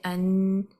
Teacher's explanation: the throat is not narrowed the tongue is not concaved from the middle and the sound is not going upward towards the roof of the mouth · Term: light letter